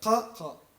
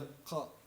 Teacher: replacing the qa sound with a glottal stop, similar to the British T in the word butter